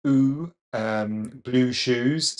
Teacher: Now, if you take the opposite corner of the mouth, the oo vowel, in modern, it's oo, blue shoes. So it's quite central, could be a tiny bit diphthongal.